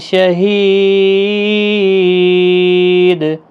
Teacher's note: دال ساکن پر قلقلہ ہوگا وقف کی صورت میں اور 3 سے 5 الف کی مقدار کے برابر کھینچ کر